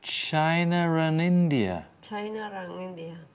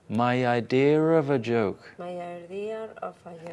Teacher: the intrusive R the intrusive R sometimes native speakers native speakers native speakers may join words together with an R sound an R sound R sound even if there is no letter